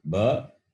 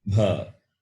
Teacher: Ba is Alpa Prana, Bha is Mahaprana.